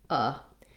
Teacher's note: O is the long stressed syllable with a clear vowel, and then shun just has that schwa, that unstressed sound.